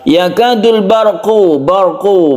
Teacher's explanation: bar sukun ro yang dibaca tebal atau tafkhim karena sebelumnya ada fathah